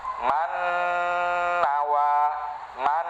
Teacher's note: Dengungnya itu yang keluar dari khoisyum.